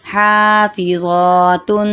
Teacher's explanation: تا پر غنہ، آگے حروف حلقی نہیں ہے